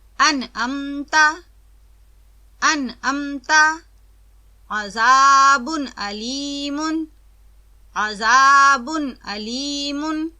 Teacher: نون کو صاف اور واضح ادا کیا جاتا ہے، آواز لمبی نہ ہو اور نہ ہی جنبش آئے۔ اس طرز ادا کو اظہار کہتے ہیں۔